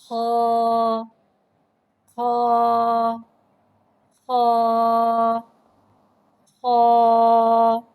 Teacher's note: خا کو ایک الف یعنی دو حرکات کے برابر کھینچ کے پڑھتے ہیں۔ خا حرف حلقیہ ہے، حلق کے اوپر والے حصے سے ادا ہوتا ہے۔ خا حرف مستعلیہ ہے، لہذا اس کی آواز حلق سے موٹی ادا ہوتی ہے۔